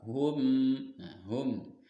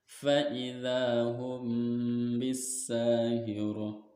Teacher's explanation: Jadi mimnya tidak dibaca jelas, yaitu masuk hum. Nah, dibacanya samar dengan dengung dan ditahan 3 harokat. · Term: ikhfa safawi